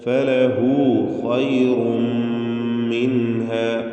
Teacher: തടിപ്പിച്ച് പെരുപ്പിച്ച് സ്വരഭാരത്തോടെ ഖാഇനെ ഉച്ചരിക്കണം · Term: തഫ്ഖീം